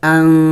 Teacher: نون ساکن ہے، اخفا کریں گے یعنی ناک میں آواز چھپانا ہوگا